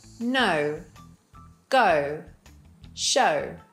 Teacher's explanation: If you look at the vowel chart, it starts in the center of the mouth and moves towards the oo position.